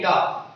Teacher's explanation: जब आप डा का उच्चारण कर रहे हो तो जीभ एकदम से ऊपर लग रही है, झटके के साथ फिर नीचे आ रही है, इस तरह का मूवमेंट होगा। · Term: उत्क्षिप्त व्यंजन